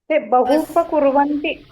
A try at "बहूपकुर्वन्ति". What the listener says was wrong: हो बहु उपकुर्वन्ति. हू दीर्घ आहे ना ते. बहुचं हू रस्व असतं ते आणि उपकुर्वन्ति. ते हू बहुचं हू रस्व असतं ते आणि उपचं ऊ रस्व असतं ते मिळून हू.